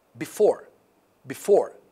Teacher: Because before has got two syllables, and here the stress, the emphasis, the focus is on the second part of the word, which is the second syllable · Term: main stress